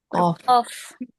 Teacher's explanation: Pangkal lidah dengan langit ee dengan langit yang lunak. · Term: huruf qof